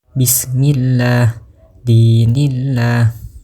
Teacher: membaca huruf lam pada lafaz Allah dengan tipis dengan cara mengangkat lidah ke atas dengan suara yang rendah. Seperti contoh bismillah dinillah. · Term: lam jelalah tipis, lam jalalah tipis